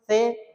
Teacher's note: جب زبان نکالیں گے باہر تو دونوں دانتوں کے بیچ سے جیسے زبان نکالیں گے تو سے نکلے گا